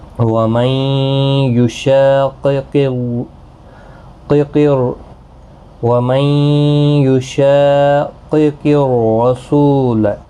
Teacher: را پور پڑھا جائے گا زبر کی وجہ سے۔ سو واو مدہ ہے، ایک الف کی مقدار کے برابر کھینچ کر پڑھیں گے۔ · شا الف مدہ ہے، ایک الف کی مقدار کے برابر کھینچ کر پڑھیں گے۔ قاف، دونوں قاف حروف مستعلیہ میں سے ہیں، پورے پڑھے جائیں گے۔ وَمَن يُشَاقِقِ الرَّسُولَ، را پور پڑھا جائے گا زبر کی وجہ سے۔